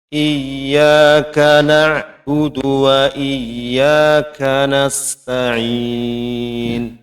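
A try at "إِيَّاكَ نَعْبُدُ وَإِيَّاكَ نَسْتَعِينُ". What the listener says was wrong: Huruf ba itu ringan ya, Pak, ringan. Jangan diperberat, jangan dipersulit. Jadi bukan bu, tidak perlu ancang-ancang bu. Bu, iyyaka na'budu, budu, gitu. Budu, oke.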